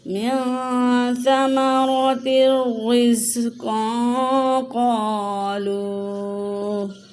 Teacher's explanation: یہاں پہ نون تنوین کے بعد آگے قاف آیا ہے، تو یہاں پہ بھی اخفا کا قاعدہ ہوگا۔